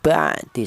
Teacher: ini keluarnya huruf berasal di tenggorokan bagian tengah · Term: huruf halaq